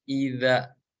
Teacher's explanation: Di sini kan huruf zal ya. Huruf zal itu ujung lidah kita nempel ke ujung gigi seri yang atas.